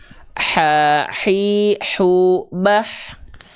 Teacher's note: H kecil juga dia punya sifat hams, tapi kadarnya mengalir nafas.